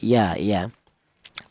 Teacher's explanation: Untuk huruf mim keluarnya huruf berasal dari kedua bibir yang rapat ya ma. Untuk huruf ya keluarnya huruf berasal dari tengah lidah